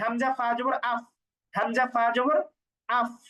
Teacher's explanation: নিচের ঠোঁটের পেট উপরের দাঁতের আগার সাথে লাগে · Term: ফায়ের উচ্চারণ